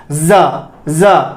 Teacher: जो आपका टंग है, आपको उसको ऊपर वाली प्लेट पर टच नहीं करना है, थोड़ा सा नजदीक लेकर के जाएंगे और क्या करेंगे? अंदर से हम एयर पास करेंगे, और जब हम एयर पास करेंगे तो एक वाइब्रेशन, कंपन क्रिएट होगा। तब जाकर के आपका जा का उच्चारण होगा।